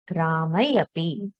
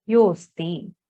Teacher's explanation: Yo asti, y plus O, then O and A akara are replaced by the purva rupa, which is okara, yosti. So the disappearance of the akara can be denoted by the avagraha.